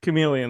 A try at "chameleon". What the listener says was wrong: emphasis on the wrong syllable there.